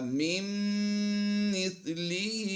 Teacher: نون ساکن کے بعد میم شدید آ گئی ہے تو نون ساکن کی آواز کو ہم میم مشدد میں مدغم کر دیں گے یعنی ضم کر دیں گے تو یہ بن جائے گا مِن مِثْلِهِ مَا يَرْكَبُونَ۔